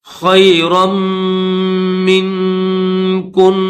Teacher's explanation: را کو میم کے ساتھ ملائیں گے، رم کی آواز نکالنی ہے، خیرن نہیں پڑھیں گے